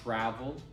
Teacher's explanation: so in the word travel in American English travel the stress is on travel the first part